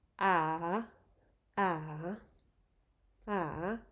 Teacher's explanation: you start again at the mid level you go down and then back up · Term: rising tone